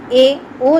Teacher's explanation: એ ઓ ના ઉચ્ચારણ વખતે બે હોઠ વચ્ચે અંતર ઓછું રહે છે તેને સંવૃત્ત સ્વર કહે છે